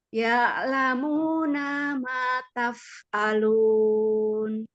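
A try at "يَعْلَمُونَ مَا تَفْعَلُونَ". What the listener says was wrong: Oh, ini bagus tapi nanya nggak ada mat ya. Ya'lamuna ma taf'alun. Ma-nya ada mat itu.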